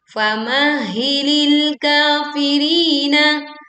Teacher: Maka tekanlah di huruf pertama famah, baru kemudian huruf kedua hi.